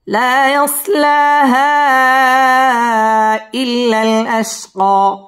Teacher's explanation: লা মধ্যে তাবাই একালিফ টান দিয়ে পড়তে হবে, ইয়াসলা মধ্যে তাবাই একালিফ টেনে পড়তে হবে। হা মধ্যে মুনফাসিল মদের হরফের উপর চিকন চিহ্ন বামে হামজা, এখানে 3 আলিফ টান দিয়ে পড়তে হবে। ইল্লাম তাসদীদ ওয়ালা হরফ, ইল্লাল আশকা এখানে ওয়াকফ করতে হবে।